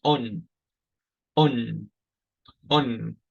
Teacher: if it only had one I pronounce it on on on I had emphasis on the o and I lengthen out these sounds